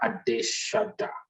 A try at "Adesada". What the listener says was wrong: Adesada. Everyone wants to say Adeshada. It's Adesada.